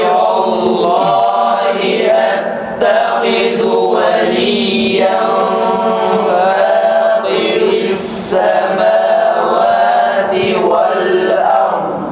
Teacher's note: Dad harfinde kalkala yapmıyoruz değil mi?